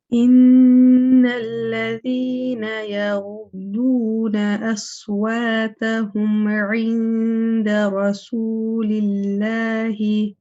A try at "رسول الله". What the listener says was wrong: Yes, just that seam can be lighter. رسول الله. But what I'm finding is your mud, because you've got a tendency of making that mud slightly heavy too. So when you say ooh, nice and light. Rasulillahi.